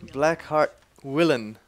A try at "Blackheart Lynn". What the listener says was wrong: Blackheart Lynn. It looks like an I, but it's an L, actually. An uppercase.